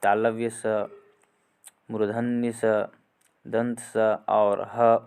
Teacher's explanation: चौथा में है ऊष्म व्यंजन। जिन व्यंजनों के उच्चारण में एक प्रकार की गर्माहट या सुरसुराहट सी प्रतीत होती है, ऊष्म व्यंजन कहलाते हैं।